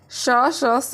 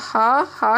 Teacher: सारे श जो है, सारे स क्या है? अघोष है और हा हमारा सघोष है